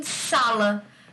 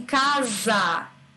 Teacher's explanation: O S de sala tem mais força do que o S de casa. O de casa parece com Z.